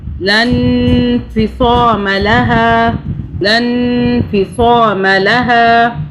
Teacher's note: نون پہ ہم نے اخفا کیا یعنی کہ 2 سیکنڈ کے لیے غنہ کیا کیونکہ نون کے آگے، نون کے اوپر جزم ہے اور جزم والے حرف کے آگے، تنوین والے حرف کے آگے الٹا پیش جو ہیں یہ 2، یہ بھی تنوین کے حرف میں سے ہیں.